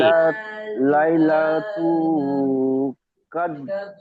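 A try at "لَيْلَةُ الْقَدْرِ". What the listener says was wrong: লাইলা তুল তুল, এই লামটা যুক্ত হবে, এই লামটা।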